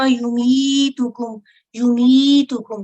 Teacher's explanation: حروف مد ہے، مد اصلی کسرہ کے ساتھ یا ساکن. 2 سیکنڈ کا ٹائم دیں گے اس کو